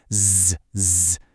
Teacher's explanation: You feel that little buzz, that vibration? That's a voiced sound.